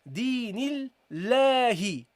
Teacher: Now here is different, guys, because this lam is preceded by this kasra. You see this lam is preceded by this kasra. We have to make the lam light here.